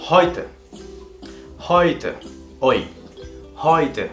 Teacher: Ahí tenemos la E y la U conjuntas, haciendo que esta palabra tenga esta fonética con este diftongo hoy.